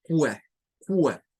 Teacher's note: la Q y la U, que suele aparecer en estas palabras, se comporta como una K y una W